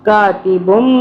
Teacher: اب یہاں پہ میم آ رہا ہے چھوٹا سا، اس میم کی آواز میں ہم پڑھیں گے، بن نہیں پڑھیں گے، بم، بم. کاتبم، میم پہ ہم تھوڑا سا غنہ کریں گے 2 سے 3 سیکنڈ کا